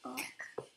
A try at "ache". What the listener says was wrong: No, it's not ack. There's an E here, so it's ache. It's ache.